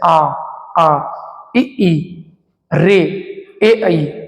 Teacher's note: एक भी होट गोल नहीं हो रहा है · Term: अव्रतमुखी